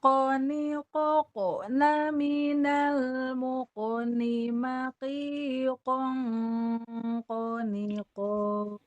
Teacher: tanwin ketemu kof ikhfa, jadi ada dengung-dengungnya.